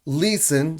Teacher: son dos sílabas, pero la primera es el acento, no la segunda